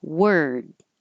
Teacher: I'm holding my tongue in the R position and then the D, so you can hear the R, were, before I move it to the D.